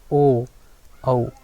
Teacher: ओ, औ, यानी कंठ और ओष्ठ दोनों मिलते हैं। ठीक है, तो इसलिए इसको बोला गया कंठोष्ठ, इसका उच्चारण। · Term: कंठोष्टय